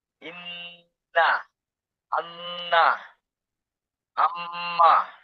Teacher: নাকের বাসি হতে গুন্না উচ্চারিত হয়